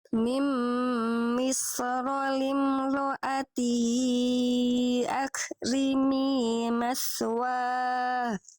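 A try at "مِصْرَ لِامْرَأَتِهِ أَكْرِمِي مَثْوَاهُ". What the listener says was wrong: Oke, bagus. Lanjut.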